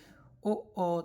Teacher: इसमें हमारा कंठ और ओष्ठ दोनों से ही ध्वनि निकल रही है। ओ, दोनों ही इसमें क्रिया कर रहे हैं, कंठ भी और ओष्ठ भी। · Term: कंठोष्ठ